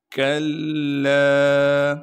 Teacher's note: یقول الانسان یومئذ این المفر کلا، کاف کو باریک کر کے پڑھیں گے اور کاف کو آگے لام سے ملائیں گے کیونکہ لام پر تشدید ہے، تشدید ہونے کی وجہ سے تھوڑا سا ٹھہراؤ رکھیں گے، اور لام کے بعد الف مدہ ہونے کی وجہ سے لام کو ایک الف کے مقدار کھینچیں گے